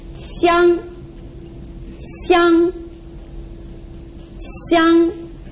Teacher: It's flat and it's a little bit high. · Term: first tone